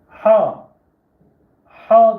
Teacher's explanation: ha boğazdan gelecek sert bir şekilde boğazdan gelecek